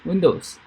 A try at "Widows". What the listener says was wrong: Widows. Not window, widow. So you get window and widow.